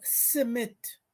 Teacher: They'd interpose a vowel in between the s and the m, so it becomes simit